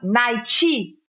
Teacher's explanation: A gente coloca o izinho aí depois do T